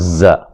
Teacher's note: زا کو جو ہے وہ سیٹی سے پڑھیں گے، ٹھیک ہے، سیٹی کی آواز آنی چاہیے